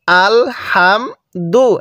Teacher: হা টা উচ্চারণের সময় মুখ দিয়ে হালকা বাতাস বের করব